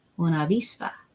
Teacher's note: a soft B so it kind of has a tiny bit of softness to it but it's not ooh it's not like a hard buzz sound